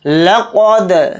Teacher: لقد لام کو جلدی پڑھیں گے، قاف کو یہاں پر موٹا پڑھیں گے یعنی پر، قاف کو دال کے اندر ملا دیں گے، دال کے اوپر جزم ہے تو دال کے اندر قلقلہ کر کے پڑھیں گے